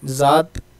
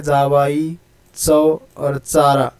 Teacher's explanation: हमारी जो ज़ुबान है वो तालु के साथ साथ दांत को भी टच करती है, इसलिए इसे दंत तालव्य कहा गया।